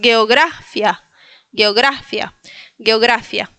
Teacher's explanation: Si quieres puedes ponerle el acento en la gra.